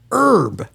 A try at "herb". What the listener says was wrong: Now you don't pronounce the H.